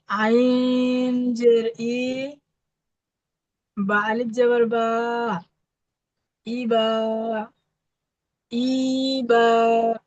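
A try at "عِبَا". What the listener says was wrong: ইটা হারাকাত টান হবে না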